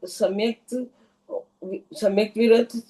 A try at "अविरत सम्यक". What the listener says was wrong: का नाम है अविरत सम्यक। विरत नहीं, अविरत सम्यक।